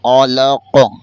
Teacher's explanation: قاف حروف قلقلہ میں سے ہے اور وہاں پر قلقلہ بھی کریں گے۔